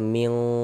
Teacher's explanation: Bunyi nun sukunnya. Jangan dibaca min, tapi dibaca ming, disamarkan.